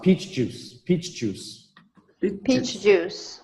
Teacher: even when we say it fast, there's still a little bit of a pause.